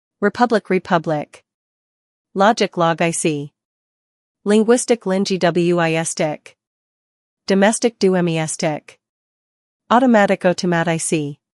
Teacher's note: the stress always falls on the syllable before I see